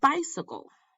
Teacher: a three syllable foot where the stress is on the first syllable